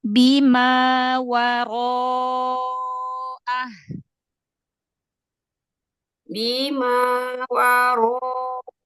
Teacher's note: Alif mengikuti huruf sebelumnya. Ro memang huruf tipis, tapi ro dalam keadaan fathah dibaca tafhim. Maka tafhimkan alifnya.